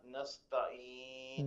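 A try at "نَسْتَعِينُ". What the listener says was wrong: The Ain to be clear. Nasta'in.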